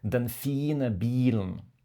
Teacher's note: Par exemple, en norvégien, quand je dis den fine bilen, tu peux entendre que le i est beaucoup plus long que les autres voyelles